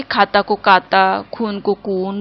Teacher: दक्षिण भारतीय बंधु ख को क और भ को ब बोलते हैं।